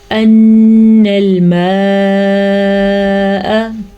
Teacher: نون کے اوپر آ گئی ہے شد، پھر ہم غنہ ادا کریں گے